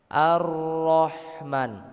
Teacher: Nah, Bapak-bapak, di ayat ini biasanya yang sering keliru adalah di huruf H ya. Jadi huruf H itu makhrajnya itu di tengah tenggorokan.